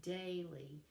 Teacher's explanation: two syllables with the stress on the first one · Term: trochaic